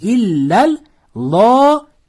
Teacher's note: Alloh lafzi o'zidan oldingi so'zga fatha bilan ulansa, lo deb o'qiladi.